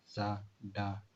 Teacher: तो जब ये अल्व्यूलर साउंड का, अल्व्यूलर रिच साउंड का प्रोडक्शन होता है, तो ये टिप ऑफ टंग इस एरिया को टच करते हैं। These are sound formed with the front of the tongue on the alveolar ridge, which is the rough bony ridge immediately behind an upper teeth.